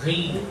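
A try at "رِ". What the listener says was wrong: Belum. Ri. Ri. Jangan dipelankan suaranya. Jelas juga samanya. Kalau volumenya 7, 7 juga volumenya. Jangan dipelankan. Tapi dihilangkan desisnya.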